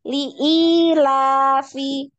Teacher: Lam li pendek, i-nya yang panjang.